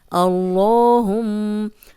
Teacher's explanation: اللہم، اب اللہ اور اللہم کا لام اس سے پیچھے زبر یا پیش ہو تو لام موٹا پڑا جاتا ہے، اس لام کو موٹا پڑھیں گے۔ کھڑی زبر ہے، 2 حرکات لمبا بھی کریں گے۔